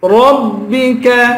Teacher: را کو با سے ملا کر را کو پر پڑھیں گے